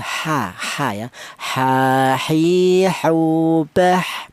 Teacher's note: keluarnya huruf berasal dari tenggorokan bagian tengah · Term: huruf ha